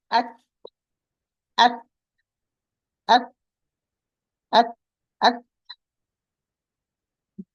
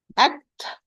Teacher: It's harfun mahmus, voiceless letter. So the air, a lot of air is going to run when I pronounce the ta. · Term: ta with the sukoon